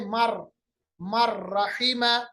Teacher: नून की आवाज को हमने रा के साथ मदगम किया, मिलाया, और नून की आवाज खत्म हो गई, गुन्ना नहीं हुआ तो इदगाम बिला गुन्ना।